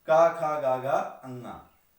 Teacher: इनमें का और गा अल्पप्राण है, जबकि खा और घा जो है महाप्राण ध्वनियां। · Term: महाप्राणीकरण